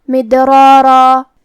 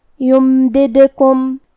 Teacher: یہاں حرف دال پہ جزم ہے تو ہمیں دال کو قلقلہ سے پڑھنا ہے، مطلب یہ حرف کو ہلاتے ہوئے یہ کلمہ کو پڑھیں گے